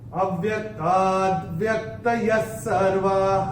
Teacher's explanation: और ये जो विसर्ग चरण की समाप्ति पे आ रहा है, चरण की समाप्ति पे जो विसर्ग आएगा उसका उच्चारण केवल और केवल ह ही होगा।